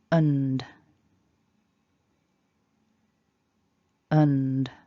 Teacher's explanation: Syllable 2 then, we've got that weak schwa, so it's very short, and then an n, which is up in the nose, and a d, which is voiced.